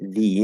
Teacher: it reduces and e will change to a which is the schwa